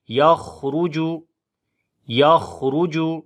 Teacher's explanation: خا کو موٹا پڑھیں گے اور یہاں پر صفت ہمس بھی ہوگی، را کو بھی موٹا پڑھیں گے، اس کے اوپر پیش ہے یخرج یخرج من بی.